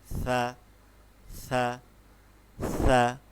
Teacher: সা হচ্ছে একটি নরম হরফ। যেটাকে আমরা বলি নরমভাবে উচ্চারণ হবে একদম জিহ্বার আগা থেকে